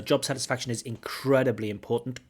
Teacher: We have the stress on incredibly. Incredibly is an intensifying adverb, so we certainly should stress that.